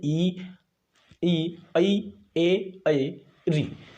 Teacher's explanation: इनके उच्चारण में जीभ का अगला भाग उठता है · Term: अग्रस्वर